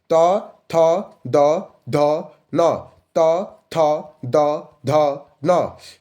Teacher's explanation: दंत व्यंजन माने दांत से